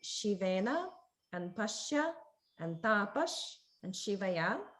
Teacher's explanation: But that's the Shiva S, where it's like a sh sound with the tip of the tongue pointing forward and very close to the upper teeth.